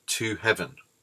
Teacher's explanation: you can hear to heaven has 3 syllables, not 2, and it is the middle syllable that is stressed.